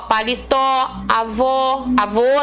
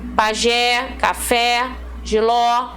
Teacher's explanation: todas elas com a última sílaba mais forte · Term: oxítonos